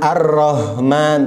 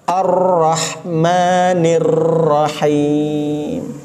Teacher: yang benar ditahan sebentar di dalam huruf ro yang pertama ataupun rak yang kedua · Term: tasydidnya